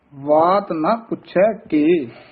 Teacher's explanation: ਵਾਤ ਵਾਵੇ ਨਾਲ ਬੋਲਣਾ ਕਈ ਬਾਤ ਹੀ ਬੋਲ ਜਾਂਦੇ ਨੇ ਬਬਾ ਨਹੀਂ ਹੈਗਾ · ਤਵਾਤ ਇਕੱਠਾ ਨਹੀਂ ਕਹਿਣਾ